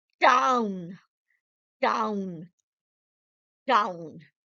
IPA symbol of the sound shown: aʊ